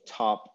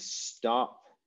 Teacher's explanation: aspirated t versus unaspirated t